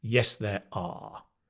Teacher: the one situation where it's not 'a' is when you say, 'Yes, there are,' and 'are' is at the end, right? So you ask, 'Are there any people?' 'Yes, there are.' Then you would use the full form.